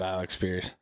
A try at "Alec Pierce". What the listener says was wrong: You said Alex Pierce. Yeah, you said Alex twice.